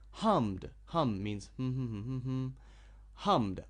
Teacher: I use my throat so it is voiced so at the end is D